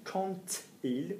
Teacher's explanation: We link. We go quand il. We make a T sound.